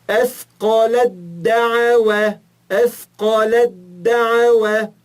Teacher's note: O Té desaparece para eu juntar com o Del.